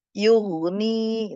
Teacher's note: Ghain, huruf ghain sebelumnya berharokat dhammah dibaca tafkhim tebal ya. Jangan tapi jadi diangkat ya.